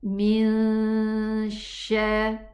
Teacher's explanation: Now here we have ikhfa with the sheen, so I go to the sheen makhraj, exit, and I pronounce the gunna.